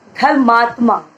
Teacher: तो जब हम अब इसको पूरा बना करके बोलेंगे तो हम ये कहेंगे धर्मात्मा। ठीक है, तो छोटा आ जो था वो बड़े आ की ध्वनि में परिवर्तित हो गया। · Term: दीर्घ स्वर